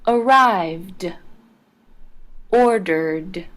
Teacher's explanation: the e d in arrived and ordered ended with a D sound